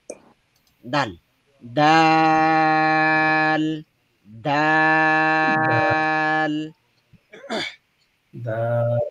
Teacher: ডালটাও জিহ্বার আগা উপরের দাঁতের গোড়াতে স্পর্শ হবে